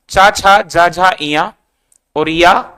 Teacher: कहां से बोला जाएगा, तालु से बोला जाएगा।